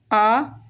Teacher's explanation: पश्च स्वर आ, पूरा मुंह खुल रहा है आ, पीछे तक खुलता है